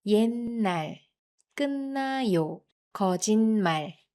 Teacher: because it is followed by n, the t sound changes to an n sound. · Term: nasal sound